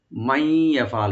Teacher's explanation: মাই ইয়াফআল মিমটাকে open করে এখানে ইদগাম with গুন্না করবেন।